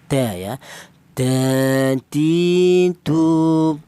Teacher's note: huruf berasal dari ujung lidah menyentuh pangkal gigi seri atas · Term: huruf dal